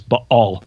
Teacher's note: There's a glottal stop in there.